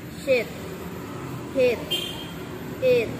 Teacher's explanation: Jadi 70%-nya kita bilang I dan 30%-nya kita bilang E. Jadi kayak E gitu loh.